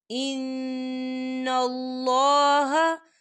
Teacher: یبدلونہ، یبدلونہ، ان اللہ، ان اللہ، دیکھیں ان اللہ، یہاں پہ نون مشدد ہے تو یہاں پر غنہ ہوگا اور اللہ کا نام جو ہے پر پڑھا جائے گا، موٹا پڑھا جائے گا، کیونکہ اللہ کے نام سے پہلے زبر ہے.